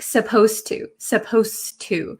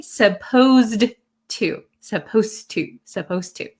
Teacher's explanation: the D sound and the T sound become kind of like one sound so when I speak supposed to supposed to it doesn't sound